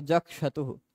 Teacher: क के बाद आने वाला दंत्य स हो जाता मूर्धन्य श